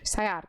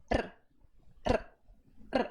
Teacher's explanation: é você treinar isso aqui intervalado R você vai ver que a sua língua ela se curva e a ponta dela bate no céu da boca várias vezes é um processo rápido e isso é melhor quando você intervala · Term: r vibrante